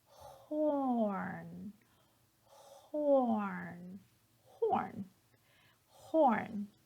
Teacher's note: but in the beginning you have that voiceless H sound